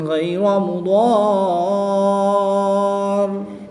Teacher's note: الف سے پہلے دوات پر زبر ہے تو یہاں پر الف مدہ ہوگا، الف مدہ کے بعد را کے اوپر سکون اصلی ہے تو یہاں پر مد لازم ہوگی، یہاں پر 3 سے 5 الف تک کھینچ کر پڑھیں گے اور وقف کی حالت میں را کی 2 زیر کو ساکن کر دیں گے اور تشدید کو باقی رکھیں گے۔